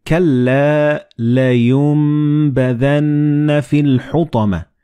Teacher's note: the noon and ba, they will be assimilated together and you will pronounce them as meme.